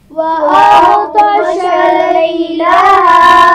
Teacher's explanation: غین اور طا دونوں موٹے پڑے جائیں گے لیکن اس میں خیال رکھیے کہ غین پر قلقلہ نہ ہونے پائے. وَأَغْطَشَ لَيْلَهَا لئی یا لین ہے اور ہا الف مدہ ہے. · خا اور را دونوں کو موٹا پڑا جائے گا